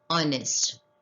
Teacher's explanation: The sentence stresses the singular countable noun and the word honest begins with a vowel sound a, honest. Though the word begins with H, the word is pronounced as honest. H is silent here